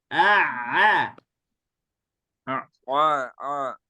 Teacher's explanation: Jadi kalau Ain ada tekanan di tekaknya